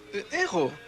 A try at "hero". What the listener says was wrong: Yeah, but in English, we pronounce the H.